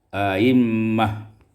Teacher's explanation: tashilu hamzati tsaniyah duna idkhal, ditasilkan hamzah yang kedua tanpa idkhal